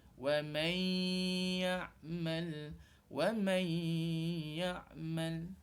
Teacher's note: kita kena gabungkan suara nun mati dengan huruf selepas dia iaitu ya. Kerana ya ini adalah milik idgham ma'al gunnah.